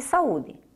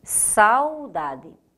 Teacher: aqui o A e o U, que lá em saúde ficaram separados, permanecem juntos. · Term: ditongo